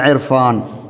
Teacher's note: ராவுக்கு கஸ்ரா இருந்தால் மெல்லினமாக மொழிவதைப் போல ராவுக்கு முன்னால் கஸ்ரா இருந்தாலும் மெல்லினமாக மொழிய வேண்டும்